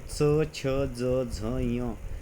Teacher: च वर्ग कोणसा आहे तालभ्यः म्हणजे च छ ज झ ञ आपली जीभ टाळूला लागते म्हणून त्याला तालव्य म्हटलं